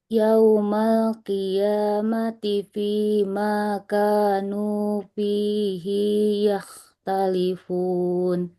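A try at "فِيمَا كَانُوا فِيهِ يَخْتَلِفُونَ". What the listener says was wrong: Huruf H-nya jangan ikut-ikutan panjang. Fi makanu fihi yakhtalifun. Fihi yakhtalifun. Hi-nya enggak. Fi-nya panjang. H-nya enggak boleh panjang.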